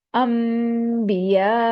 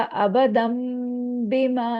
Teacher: नून साकना के बाद अगर बा आ जाए तो नून साकना की आवाज मीम में बदल जाती है